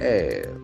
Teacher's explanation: That R is silent.